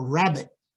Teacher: Consonant, strong lip rounding when it's before a vowel at the beginning of a word.